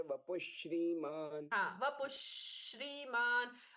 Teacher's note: ये विसर्ग का आधा श है कि श्रीमान का आधा श, ये भेद हम नहीं कर पाते क्योंकि दोनों आपस में मिल गए हैं